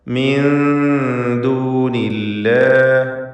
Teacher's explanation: സാക്കിന താനൂനും ശേഷം ദാലും ഇഖ്ഫാ ഹഖീഖി നൽകി മറച്ചു മണിക്കുക